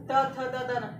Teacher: और उसके बाद त, अगर त देखोगे तो जीभ हमारा सीधा दांत के नीचे आके दबता है, त थ, और हमारा दांत जो होता है जीभ जो होता है हमारे दांत से लड़ता है या दांत को स्पर्श करते हुए निकलता है